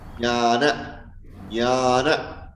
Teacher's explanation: It is a palatal touch, tongue touching the upper palate, hard palate. Yes. And sound comes from the nose.